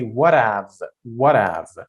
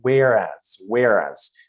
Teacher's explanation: So you connect them. You connect the last letter to the first uh letter after h and you don't pronounce the h sound